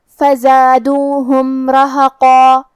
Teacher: یہاں میم کا حکم ہے اظہار شفوی، تو ہم میم ظاہر کریں گے اور بغیر غنہ سے یہ حکم کو ادا کریں گے · کلمت رہقا حرف الرا پہ زبر ہے، تو یہاں را کا حکم ہے تفخیم. ہمیں را کو موٹی آواز میں پڑھنا ہے